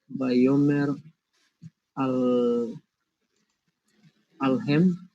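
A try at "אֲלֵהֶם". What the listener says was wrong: Normally you would have a yod in there. Alehem, to them.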